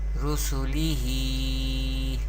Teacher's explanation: Here ha has khadi harakat, that is khada zer, and we know khadi harakat or vertical harakat we pronounce by stretching up to one alif or two harakat